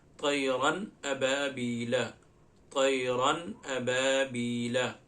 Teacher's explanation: اظہار کے مطلب یہ ظاہر کرنا، تو یہاں پہ ہم کرتے ہیں کیا کہ جب بھی تنوین نون ساکن کے بعد حروف حلقی آئے تو نون کی آواز کو ظاہر کر کے پڑھتے ہیں، نون کی آواز کو ظاہر کر کے پڑھتے ہیں بغیر غنہ کے، اس کو اظہار کہتے ہیں۔